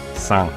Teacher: Right, it's spelled san, S-A-N. But the N makes a NG sound, so it's san.